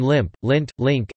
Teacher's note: only one of the nasals is possible in any given position: /m/ before /p/, /n/ before /t/ or /d/, and /ŋ/ before /k/ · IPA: /lɪmp/, /lɪnt/, /lɪŋk/